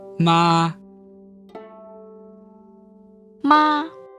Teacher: We didn't hold it out longer than it needed to be held. We just made sure that the note was comfortably high within our natural speaking voice. That's the proper way to say a first tone. · You don't have to go quite so high as long as it's closer to the upper range of your natural speaking voice